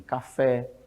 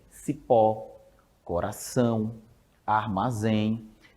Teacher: palavra oxítona é aquela palavra eh que a a sílaba forte a sílaba tônica é aquela última da palavra